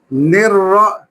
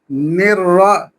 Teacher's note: تھوڑا سا را کی ادائیگی میں تکرار پیدا ہوگا